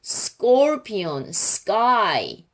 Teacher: 그러면 예를 들어서 뭐 스콜피온이라고 하면 스콜피온 스가 잘 안 들리는 거예요. 그래서 스 다음에 C가 끄 소리로 바뀌어요. 된 소리로 바뀝니다.